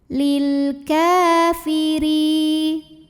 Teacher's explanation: huruf ra dibunyikan secara tarqiq karena barisnya di bawah kasrah, maka bacanya tipis. Lil kafiri, ri madh bi'i dhahiri karena ada ya sukun didahului baris kasrah, maka panjangkan ro-nya 2 harokat.